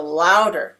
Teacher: I'm speaking more loudly on the first syllable of this word and it is also typically in English higher in Pitch so